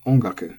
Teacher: Ongaku is head high.